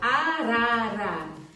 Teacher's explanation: a língua sobe e a ponta da língua ela vibra um pouco